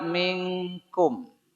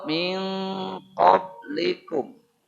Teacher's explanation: yang menjadi Eng Hanya dua yaitu n ketemu ka n ketemu Qi